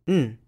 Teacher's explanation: The indefinite article is pronounced as a syllabic nasal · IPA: /n̩/, n̩